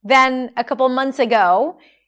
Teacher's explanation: notice how we dropped the TH here, you don't have to pronounce it